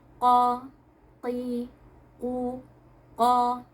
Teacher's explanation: Nah, saat kita mengucapkan huruf qaf, qa, qi, ku, ko. Nah, pangkal lidah kita naik, akan tetapi suara kita tidak terkepung di langit-langit mulut